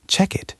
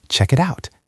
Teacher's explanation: a native speaker connects the K sound in check to the I sound in it. It becomes check it. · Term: linking